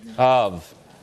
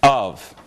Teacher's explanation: That starts with a glottal stop.